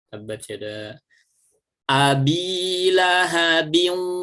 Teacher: nun sukun atau tanwinnya dimasukkan ke dalam huruf wawu, tapi posisi bibirnya harus tetap mencucu. Ya, jangan sampai tidak mencucu. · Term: idgham bi gunnah